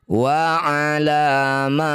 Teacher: Cara bacanya ma panjangkan 6 harokat, huruf terakhir sukunkan. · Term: mad arid lis sukun